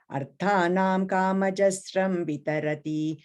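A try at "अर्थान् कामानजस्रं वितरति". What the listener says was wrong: Second line you're saying arthanam, I'm hearing is arthan, just in. It's like attan in Tamil, attan mari arthan, right? Just arthan kamana jasram.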